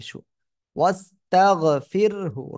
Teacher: সিন জবর ওয়াস তা জবর তাগ ফা জের ফির হাফে সুস্তাগফিরহু র সাকিন তার ডাইনে জের চিকন করে পড়তে হবে